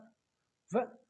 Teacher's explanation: यह दांत और होट से व का उच्चारण होता है अपन बोलते हैं व व व बोलेंगे ना अपने दांतो में